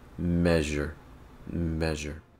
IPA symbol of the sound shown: ʒ